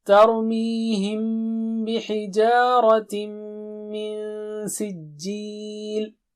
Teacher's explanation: تا پتلا ہے، را موٹا ہے، رائٹ؟ پتلا یا باریک ہے اور را موٹا ہے۔